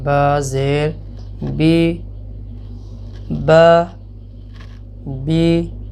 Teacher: زیر کی آواز کو زبر کے مقابلے میں پست آواز سے ادا کیا جاتا ہے